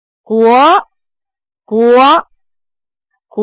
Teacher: 阳平调我们叫高声调嘛，它是从三到五这个跨度，所以起调的时候要高一点